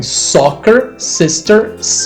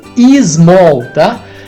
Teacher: nós falantes do português temos a tendência de colocar um som de e sempre que o s começa uma palavra